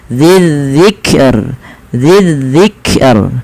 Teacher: Karena sebelum huruf yang dimatikan itu ada huruf kasrah, maka dia dibaca dengan tipis rohnya, tidak dibaca wal Qur'ani dzidzikr, enggak, tapi dia dzidzikr, dzidzikr.